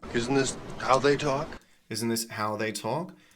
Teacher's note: This word, this syllable how is the strongest syllable here. This is where the direction of his intonation changes.